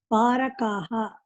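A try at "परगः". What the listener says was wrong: Not kaha.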